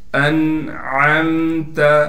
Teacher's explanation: حمزہ کو نون سے ملائیں گے بغیر غننے کے، یہ غلطی اکثر لوگ کرتے ہیں، یہاں پر غنہ کرتے ہیں، تجوید کے اعتبار سے یہاں غنہ نہیں ہے۔